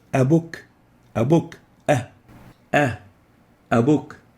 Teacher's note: Hamza, a, is articulating at the deep throat. That's why it's a throat letter.